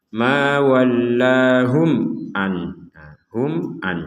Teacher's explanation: ada mim sukun bertemu ain. Kita harus membacanya dengan jelas.